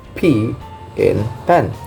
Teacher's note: with the subscribing both lips together therefore is completely blocked and the air pressure builds up behind the closure before being released · both lips are brought together, blocking the airflow momentarily, and then releasing the lips, result in the burst of sounds due to the sudden release of the buildup mixture. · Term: biblial sounds